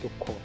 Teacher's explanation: অ এর উচ্চারণ উ এর রূপে উচ্চারিত করে থাকি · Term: অ সংবৃত